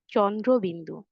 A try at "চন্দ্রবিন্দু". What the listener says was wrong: সুন্দর হয়েছে, ধন্যবাদ।